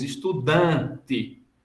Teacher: A gente não pronuncia o N, a gente nasalizou o A, a gente omite isso.